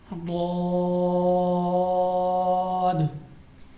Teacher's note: زبان کی کروٹ اور اوپر کی داڑھوں کی جڑ سے ادا ہوتا ہے. زبان کی کروٹ یعنی زبان کو فولڈ کر کے، زبان کی کروٹ اور اوپر کی داڑھوں کی جڑ سے. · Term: حرف حافیہ